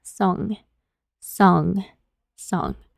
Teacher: para la G no es muy marcada como en el español.